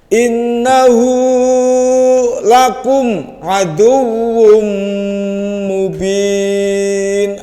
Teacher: mubinun dibaca mubin nunnya dimatikan panjang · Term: Mad arid lukun